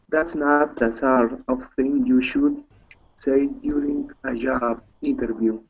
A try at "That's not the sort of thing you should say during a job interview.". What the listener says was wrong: Good. Okay, good reading.